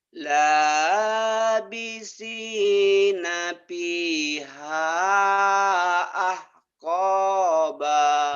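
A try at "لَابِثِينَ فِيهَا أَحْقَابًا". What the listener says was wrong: Nah, gitu bagus ya. Jadi jangan di kecuali kho ya.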